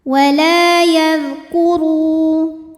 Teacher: ru mad tabi'i zahiri karena ada waw sukun didahului dhammah, maka huruf ra panjang 2 harokat